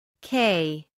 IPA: keɪ